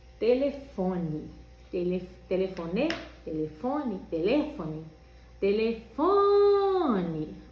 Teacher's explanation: o fô bem comprido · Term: sílaba tônica